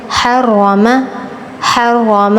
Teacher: رو پر تفخیم کرنی ہے